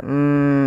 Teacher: ada gunah di lafal mim dan wajib kita tahan dahulu sepanjang dua harakat